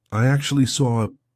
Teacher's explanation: the intrusive R is when we insert an R to link to the next word even though there's not an R written there we just put one in and this can be extremely confusing